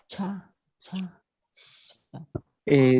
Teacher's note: Sería el ápice de la lengua con el superior del paladar.